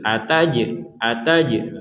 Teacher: Qolu ataj'alu fiha. Ada jim sukun kita mentalkan atau kita dibaca dipantulkan.